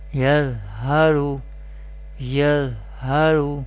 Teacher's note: raw is mustalia letter, will be pronounced with thicker voice or heavy voice, and raw is sakin here because raw has sakin sign, sukoon sign or jazm sign.